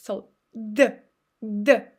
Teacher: Here is how we pronounce it. So here you need to touch your upper row of teeth by your tongue, and again engage your vocal cords